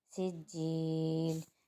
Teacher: وقف کی صورت میں مد عارض وقفی بنے گا اور اس کو 6 الف کی مقدار کھینچیں گے